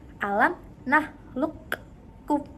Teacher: Ada huruf qaf dan kaf, dan huruf qaf itu dimasukkan ke dalam huruf yang kedua yaitu huruf kaf sehingga menjadi alam nakhluqkum.